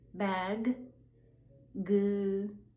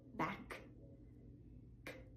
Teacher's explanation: Bag, g, voiced. Back, k, no voice.